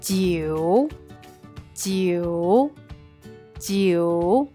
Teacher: Es el tercer tono. Como una montaña rusa, baja y sube